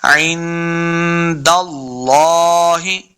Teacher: نون ساکن کے بعد دال حرف اخفاء سے ہے تو اخفاء کا قاعدہ ہے، غنہ کر کے پڑھیں گے ، عند اللہ، دال کو لام کے سامنے لانا ہے، لفظ